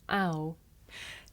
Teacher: this is a diphthong a double vowel sound the shape the mouth makes changes from the beginning of the sound to the end it's pronounced ow now did you notice the shape of my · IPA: aʊ, /aʊ/